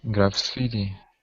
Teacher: graffiti yeah stress in the second syllable